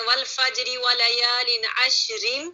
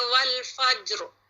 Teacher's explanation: اگر آپ کچھ ایسے ہی پڑھتے ہیں والفجری ولیال عشر تو پھر را باریک ہوگا